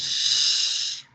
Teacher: Los sonidos palatales porque la lengua ya toca un poquito más atrás de los alveolos, ya toca el techo de la boca, el paladar